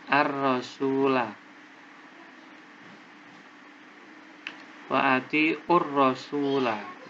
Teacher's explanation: Karena sebabnya ada alif lam bertemu dengan ro, yaitu huruf al-syamsiyah. Cara membacanya langsung dimasukkan. Artinya lamnya tidak terbaca.